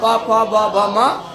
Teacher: और बाकी बोलो प फ ब भ म, तो ये सब में बोल सट रहा है हमारा ओष्ठ। ओष्ठ देखो ऊपर वाला नीचे वाला दोनों आपस में स्पर्श होता है, तब जाके हम प फ ब भ म बोल पाते हैं।